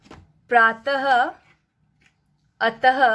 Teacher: विसर्ग का उच्चारण ह की तरह होता है